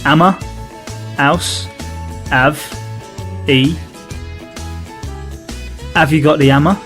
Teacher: one of the key features of the cockney english accent is the dropping of the h sound at a start of many words